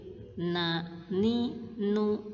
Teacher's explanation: mim kemudian yang kedua makhluk huruf nun seperti gambar berikut ini ujung lidah ketemu gusi gigi seri atas